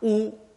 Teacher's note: Chinese u is a pure vowel with the back of the tongue, u, at the back of the mouth.